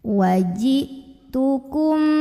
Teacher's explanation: kemudian ada ikhfa syafawi karena mim sukun menghadapi huruf ba maka mim sukun dengungkan dulu Tahan dulu